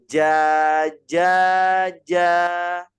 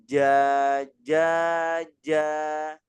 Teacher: kalau huruf jim tengah lidah kita itu menempel di langit-langit. Ya, jadi jangan sampai ada berbunyi c, ca.